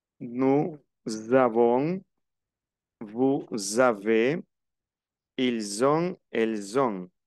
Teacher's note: Nous avons, aquí se une, como una comienza por vocal y la otra termina en consonante, se hace una liaison. Es la unión de la última letra con la que viene.